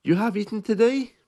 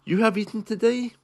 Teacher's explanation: You can hear my intonation is being raised.